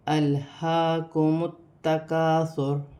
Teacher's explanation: الہاکم التکاثر حتی زرتم یہاں لام ساکن ہے، لام کو حمزہ کے ساتھ ملا کر پڑھا جائے گا، اور ہا سینے والی ہا پر کھڑی زبر ہے، اسے ایک الف کی مقدار کھینچ کر بھی پڑھا جائے گا، جیسے الہاکم التکاثر۔